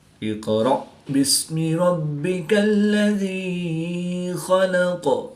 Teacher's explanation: قاف حروف قلقلہ میں سے ہے تو یہاں پر قلقلہ صغریٰ کر کے پڑھیں گے